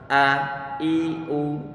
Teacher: Kemudian pengucapannya huruf a hamzah, ini dia hurufnya adalah di pangkal tenggorokan kita, a i u. Coba jangan sampai nanti ditekan sehingga nanti akan terdengar suara a.